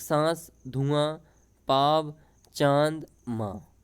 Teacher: अनुनासिक जो शब्द होते हैं इनमें हवा जो रहती है मुख के साथ नाक से भी निकलती है